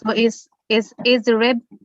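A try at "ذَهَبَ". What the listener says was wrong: No, dhahaba, not dharaba yadhribu. Dhahaba.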